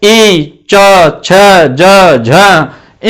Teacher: हमारी जो जीवा है वो ऊपर की ओर लगती है, तालवे की ओर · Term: तालव्य